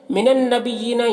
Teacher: نون مشدد ہے تو یہاں پر غنہ کریں گے۔ بیین یہاں پہ یا کے نیچے کھڑا زیر ہے تو اسے ایک الف کے برابر کھینچ کر پڑھیں گے کہ یہ یا مدہ کی طرح ہوتا ہے۔